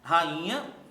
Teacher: veja que o I tem força tônica